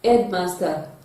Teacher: You will have the first syllable stressed, while the second syllable will not be stressed. And the examples we have are headmaster, the head is having the stress. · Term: stressing compound words